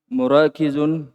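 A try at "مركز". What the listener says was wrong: Markazun. Markazun. Tidak dipanjangkan kapnya. Biasa cepat.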